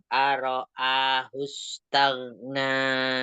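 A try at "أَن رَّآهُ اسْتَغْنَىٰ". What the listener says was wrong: Nah, ro-nya ada tasdid yang arro, arro'a.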